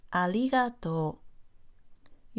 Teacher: For example, listen to the R in ありがとう. Your tongue will briefly touch your upper gum ridge.